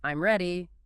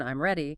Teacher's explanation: If you say it with a falling tone, I'm ready, it's a statement, but if you say it with a rising tone, I'm ready, it becomes a question even though the words are identical.